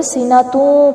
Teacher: تا کے اوپر دو پیش ہے اور آگے واو آ رہا ہے، تو ہونٹوں کو گول کرتے ہوئے سینہ توں پڑھیں گے